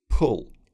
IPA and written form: pʊl (pull)